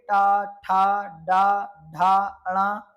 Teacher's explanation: इन सब में आपकी जीभ आपकी मूर्धा से स्पर्श करती है। इसलिए ये सभी मूर्धन्य व्यंजन कहलाएंगे।